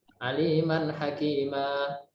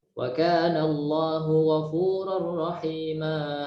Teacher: Dibaca dua harokat aja. Berarti pembacaannya mad iwad itu dua harokat